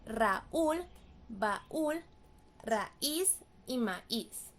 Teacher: Y hay palabras que tienen tilde a pesar de no terminar en vocal, en N o en S. Esto es por la ruptura del diptongo AU o AI